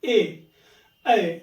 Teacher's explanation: जब भी इनका उच्चारण करेंगे तो मुख द्वार क्या होगा? आधा बंद रहेगा। जैसे यहां पे देखिए ए ऐ तो पूरा नहीं बंद हो रहा है केवल आधा ही बंद हो रहा है। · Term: अर्ध संवृत स्वर